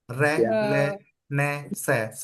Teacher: ये वो व्यंजन होते हैं जिनका उच्चारण करते हुए जीभ का अगला भाग ऊपर के दांतों के मसूड़ों के पीछे लगता है। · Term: वत्सर्य व्यंजन